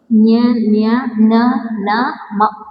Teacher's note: ಅನುನಾಸಿಕಾಕ್ಷರ ಅಂದ್ರೆ ಮೂಗಿನಿಂದ ಉಚ್ಚಾರ ಮಾಡ್ತಕ್ಕಂಥದ್ದು.